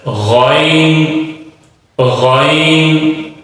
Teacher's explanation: حلق کا جو منہ کی طرف والا حصہ ہے اس سے ادا ہوتا ہے اور بھاری پڑا جاتا ہے، موٹا کر کے پڑا جاتا ہے، غائن غائن۔